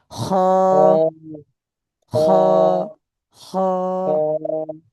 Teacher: খ বলার সময় কিন্তু মুখটা গোল হবে না, মুখটা স্বাভাবিক থাকবে। খ, খ, খ, খ, খ, খ, দেখেন একেবারে স্বাভাবিক।